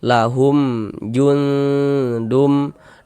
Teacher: Karena mim sokun setelahnya huruf jim, bukan huruf ba, bukan huruf mim. Ya, hukumnya izhar syafawi. Baca jelas tak berdengung.